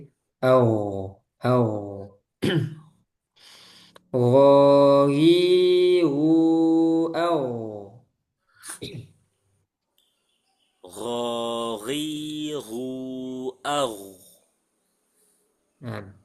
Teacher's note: Gin tebal dan dia punya sifat rakhawah suaranya mengalir